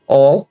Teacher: You say ol or al instead of oil when pronouncing oil.